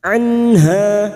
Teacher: nun sukun bertemu ha dibaca jelas tanpa mendengung namanya bacaan izhar halq anha hanya kita panjangkan dua harakat fathah